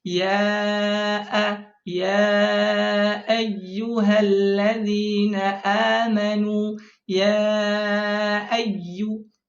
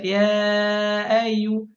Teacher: Mentashil itu dia meringankan, membaca antara hamzah dan alif yang disamarkan.